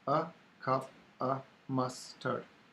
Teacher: They're all, in fact, schwa and what I used to call the duck sound, which is the inverted V.